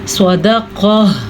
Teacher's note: اب یہ جو لفظ صدقہ ہے, اس میں صاد پر پڑھا جائے گا اور قاف بھی پر پڑھا جائے گا کیونکہ یہ دونوں حروف مستعلیہ سے تعلق رکھتے ہیں